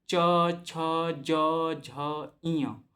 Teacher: उसके बाद तालव्य च, छ, ज, झ, ञ तो इसमें जो तालु है उसका प्रयोग हो रहा है